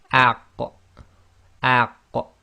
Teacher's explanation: this involves the tongue, the back of the tongue, touching the very back upper portion of your throat. So it's really to do with the soft palate. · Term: qaf